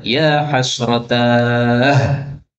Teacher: kalau berhenti maka sebagian ulama qiraah menutupnya dengan ha, yaitu qiraah Imam Ruwais. Dia membaca ya hasratah kalau berhenti.